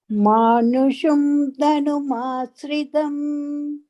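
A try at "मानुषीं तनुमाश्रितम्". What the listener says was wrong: Anga manusham is not there. Manushim tanumashritam.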